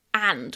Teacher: The strong form is and with a very open a. But said quickly, we soften it and we remove the d at the end.